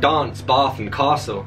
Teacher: was the sudden tendency in 18th century upper class southern england to pronounce words like dance bath and castle with a broad a